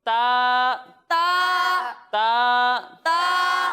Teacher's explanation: और ता हुरूफ मुस्तालिया में से नहीं है तो इसे हम बारीक पढ़ेंगे